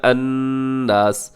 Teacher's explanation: یہاں نون مشدد ہے، آپ یہاں غنہ کیجیے گا